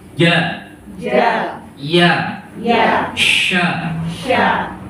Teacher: Itu sama tempatnya. Jim, shin, ya. Yaitu tengah lidah.